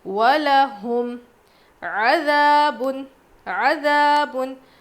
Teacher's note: الف مدہ ہے، ذال ہلکا پڑھیں گے۔ عَذَابٌ، تنوین کے بعد پہ دو پیش ہے نا، اس کو تنوین کہتے ہیں۔